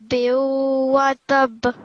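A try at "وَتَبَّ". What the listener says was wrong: Tab. Give more emphasis. Watab. Yeah, not to the ta, but to the ba. Watab.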